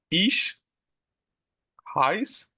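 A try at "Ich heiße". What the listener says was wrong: না, এই দেখেন এখানে দেখেন উচ্চারণ ই আছে, লাস্ট ই আছে। Ich heiße Jan,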